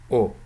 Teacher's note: centrally pronounced rounded vowel O. This is pronounced as O.